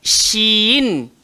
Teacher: Shin keluar dekat tengah lidah, langgar di langit atas. Shin. Dan ramai old school dia baca shim.